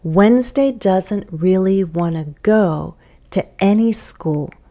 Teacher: and yes I'm reducing want to go